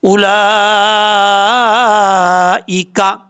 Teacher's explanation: 3 الف کے برابر اس کو لمبا کرنا ہے مد متصل کو